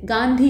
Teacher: तो यहाँ पे हम गांधी नहीं कहते, गांधी कहते हैं, आराम से बोल देते हैं, नाक का हल्का सा इस्तेमाल करते हैं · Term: अनुस्वार